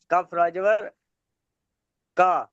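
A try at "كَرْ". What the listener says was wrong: কাফরাজবার কা না কার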